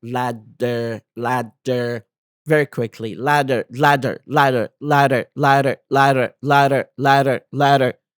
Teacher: Notice how tongue lightly taps the roof of your mouth. يعني لاحظ شلون يضرب بخفة على خلف المنطقة خلف الأسنان الفوقية of your mouth. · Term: flap T sound